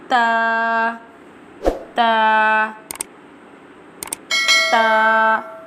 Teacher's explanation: pronounced from the tip of the tongue touching the roots of the top two front teeth